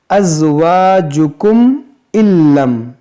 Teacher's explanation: نون ساکن کے بعد لام ہے تو یہاں پر ادغام کریں گے